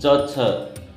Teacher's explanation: इसमें जहां पर जिह्वा टकराती है वह आपका तालु है।